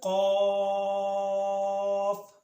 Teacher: زبان کی جڑ کوے کے قریب جب نرم تالوں سے لگے